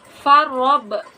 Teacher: Huruf roh dibaca tafkrim atau tebal karena disukun oleh huruf yang berharakat fathah.